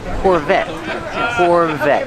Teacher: The T is a stop T. The E is silent.